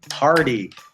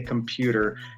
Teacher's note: Now T in the middle of a word, often because we're kind of lazy, at least North American English, we pronounce it like a D. We say party.